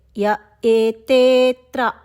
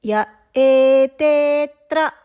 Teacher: పాదం మధ్యలో అచ్చుతో కనుక ఒక పదం మొదలైతే య ఏతేత్ర ఆ పదం మొదలయ్యింది కాబట్టి అక్కడ ఒక చిన్న పాజ్ తీసుకోవాలండి.